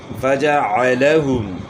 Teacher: فجعلہم عین کے بعد گلے کے درمیان سے نکالنی ہے، پیش میں ہونٹ گول کرنے، ہا کی آواز گلے کے آخر سے نکلے گی، اور میم ساکن میں اظہار ہوگا، غنہ نہیں ہوگا۔